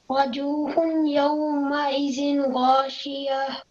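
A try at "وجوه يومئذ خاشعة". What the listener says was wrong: Okay, no, this one, okay. وجوه يومئذ خاشية خاشية. It's with a kha, okay?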